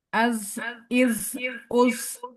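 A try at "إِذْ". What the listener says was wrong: Nah, jangan ada nafas di akhirnya, jangan as. Posisi, jangan az. Itu nanti jadi zai. Lidahnya nempel ke ujung gigi seri yang atas. Az, nah, iz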